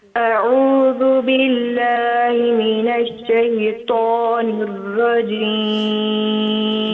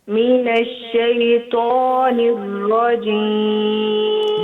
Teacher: را کو ذرا پر کر کے موٹا کر کے منہ میں ہوا بھر سی جاتی ہے، پیچھے سے زبان اونچی ہو جاتی ہے